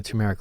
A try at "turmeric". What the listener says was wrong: Turmeric, not turmeric. It's not TUM, it's TUR.